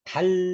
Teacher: 혀가 입천장 위에 딱 다 있어요. 안 떨어져요. 달 이렇게요. 달 이 발음이 영어의 L 발음이에요.